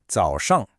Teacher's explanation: So, it goes down then up. The second syllable is a light neutral tone. So, it's much quicker.